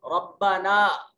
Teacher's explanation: रब्बाना में ये छोटी मद है, इसको 2 से 3 अलिफ के बराबर लंबा करेंगे